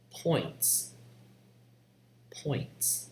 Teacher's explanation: It starts with open O. It ends with the lax vowel E.